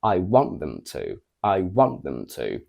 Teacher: at the end of a sentence it's not a Content word it's just a function word so it doesn't carry stress meaning that the only word that is stressed in this sentence is want